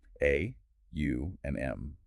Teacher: A starts in the back of the throat, U rolls through the mouth, and M closes the lips.